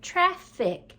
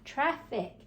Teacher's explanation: you can kind of hear an F on both sides when you say the word traffic